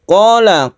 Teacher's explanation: Qala ini adalah mad tabi'i atau mad asli karena ada alif, sebelumnya ada fathah, dibaca 1 alif saja.